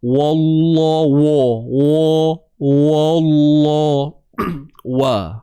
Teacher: kalimah Allah tu saja yang tebal, wa tak tebal. Jangan wa, wallahu.